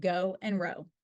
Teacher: The long O is produced as a diphthong, starting with the tongue in the mid-high back and back position in the mouth, transitioning from more closed to a more open position with rounded lips.